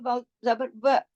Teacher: व अब देखिए वाव, वाव जो है वो बारीक लेटर है। वाव, वाव जो है उसको पढ़ने के लिए आपके होठों का छोटा गोल दायरा बनना चाहिए। व, आप बोल के देखिए वाव जबर व, छोटा गोल दायरा बने।